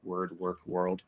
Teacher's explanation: then if it's not stressed it'll be reduced to er but these words are stressed the wor words and they're still pronounced er so this is just a regular er vowel okay